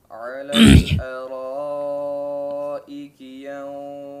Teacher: Gunnah pada ikhfa ya dalam kata ini maka ditebalkan gunnahnya karena setelahnya adalah huruf isti'la ya, salah satu daripada huruf isti'la.